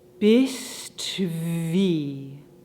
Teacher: There aren't any pauses in between the words. The breath keeps going between bist and wie.